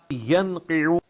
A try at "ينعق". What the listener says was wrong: ينعق ينعق. بیٹے ینقع نہیں، ینعق. پہلے عین اس کے بعد قوف. ینعق